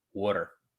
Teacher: we do put like a d sound instead of a t sound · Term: philly accent